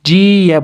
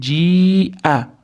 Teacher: Ji-ya bo'lib ketmasin, ji-a. Hamzaning ustidagi a ni alohida aytamiz.